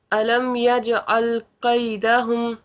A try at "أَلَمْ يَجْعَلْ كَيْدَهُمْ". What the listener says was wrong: کاف باریک رہے گا. ألم يجعل كيدهم كيدهم ألم يجعل كيدهم.